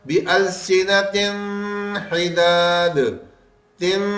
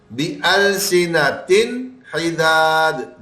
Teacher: اگر غنہ بننے دے دیا بس ہمارا یہ قاعدہ غلط ہو گیا، ہمارا اظہار نہ ہوا، وہ اخفا میں چلا جائے گا. ہمیں غنہ نہیں بننے دینا اور نون کی آواز واضح کر کے بتانی ہے · تو ہمیں نون کو بالکل صاف کر کے پڑھنا ہے اور غنے کی آواز بننے نہیں دینی